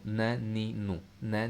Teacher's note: नून में भी ज़बान की नोक ही शामिल है, ज़बान की नोक नून, और ऊपर वाले दांतों के पीछे वाले हिस्सा, ये नून। ठीक है, ऊपर वाले दांतों के पीछे वाले हिस्से से आपने नून निकालना है।